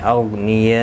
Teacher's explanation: غین مستعلیہ ہے، پر پڑھنا ہے، اس کو ہلانا نہیں